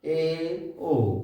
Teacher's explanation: फिर इसके बाद दूसरा भेद है अर्ध संवृत स्वर। इसमें मुख आधा बंद रहता है